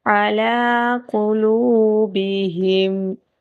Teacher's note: قاف کو موٹا پر پڑھا جائے گا